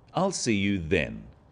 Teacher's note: notice how the stress is on the word then to confirm that the time is definite